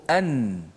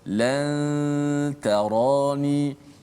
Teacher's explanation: maka nun itu didengungkan tapi hujung lidah kita tak sentuh makhraj nun dekat langit atas tu.